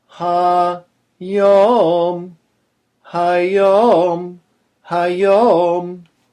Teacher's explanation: This is another two-syllable word, hayom, with the emphasis on yom.